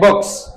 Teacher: k is a voiceless sound so s at the end is pronounced as s